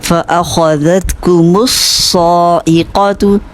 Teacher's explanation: صاد مشدد ہے، اس کو اچھا سا ٹائم دیں گے